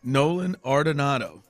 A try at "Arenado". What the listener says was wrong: that's close. That first D is not in the right spot.